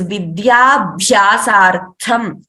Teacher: Vidya is, Dya is Alpa Prana, Bha is Mahaprana, Tha is Mahaprana.